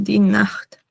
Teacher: Recuerden los que les dije que la CH o CH se pronuncia como una J suave